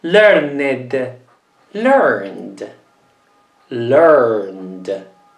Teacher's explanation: Sempre con una D, perché il verbo finisce con un suono dolce, una N.